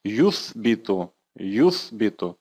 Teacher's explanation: Первый слог «ту», второй слог «би», второй слог с конца. «Юс» – это третий слог с конца. Вот на него и падает ударение.